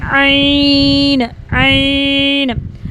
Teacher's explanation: आइन को हमने गले के दरमियान से दबा के अदा करेंगे।